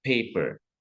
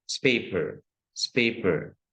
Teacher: kalau misalkan unaspirated artinya tidak ada haknya, itu seperti kita pakai S di awalnya. Ya, kayak misalkan paper itu kan harusnya ada haknya, paper.